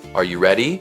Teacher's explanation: Rising intonation. The pitch rises at the end of the sentence. This signals a question or uncertainty.